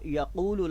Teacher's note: حرف قاف جو ہے اس کو اپنے مخرج سے ادا کرنا ہے، یعنی زبان کی جڑ اور بالمقابل اس کا نرم تالو ، اور اس کے اوپر ضمہ ہے یعنی پیش ہے، اور